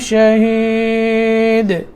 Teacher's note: شہید یہاں قلقلہ کرنا ہے دال میں